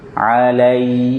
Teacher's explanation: Jangan dibaca seperti hamzah. Ada ya sukun sebelumnya fathah, dibaca dengan lin, lembut. Alai, senyumkan.